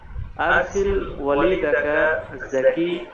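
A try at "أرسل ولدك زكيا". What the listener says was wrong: ওয়ালাদাকা যাকিয়া আপনার এখানে পুরোপুরি পড়তে হবে জের জবর গ্রামার ঠিক মতো বুঝতেছেন কিনা এটা বোঝার জন্যই সাধারণ কথাবার্তার মতো করে না পড়ে শেষে জের জবর দিয়ে পড়তে হবে ওয়ালা দাকা জাকিয়া জাকিয়া হচ্ছে আলাদা সিফাত,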